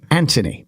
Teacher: Brit's pronounced the th in Anthony like a t